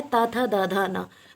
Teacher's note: और ता वर्ग किस में आता है, ये आता है दंत में।